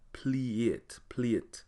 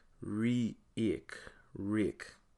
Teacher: the long form of the vowel a in patois it takes on an e sound